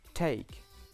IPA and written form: teɪk (Take)